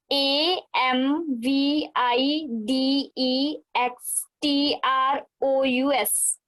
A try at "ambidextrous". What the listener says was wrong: Okay, it's AMB, V नहीं है, B है, AMB, बब्बे नाल। हाँ, इन्हों बोलना है ambidextrous, ambidextrous, ambidextrous, ambidextrous